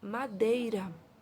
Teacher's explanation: Eu tenho primeiro a vogal E, depois a semivogal I. Então, é um ditongo decrescente, maior para o menor, tá certo?